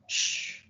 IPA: ʃ